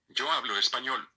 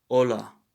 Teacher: The H, once again, is silent. The letter H is silent here.